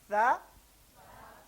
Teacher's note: زبان کی نوک اوپر والے دو دانتوں کے سرے پہ رکھنی ہے، رکھ لیں. دوسرا اسٹیپ ہے زبان درمیان سے اٹھانی ہے.